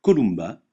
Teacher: Le M se prononce me comme dans mulot, jamais nasalisé comme dans emporter.